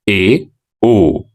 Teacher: अगला है अर्धसंवृत। ऐसे स्वरों के उच्चारण में मुख आधा बंद रहता है।